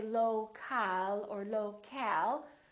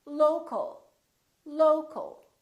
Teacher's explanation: we reduce the second syllable and it becomes the uh local local so you see o l and a l sound